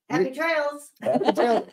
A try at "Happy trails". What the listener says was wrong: No, not trail. Trails.